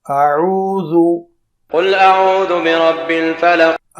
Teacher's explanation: پہلے حمزہ کی آواز نچلے حلق سے نکلے گی اور اس کے بعد عین پر آنا ہے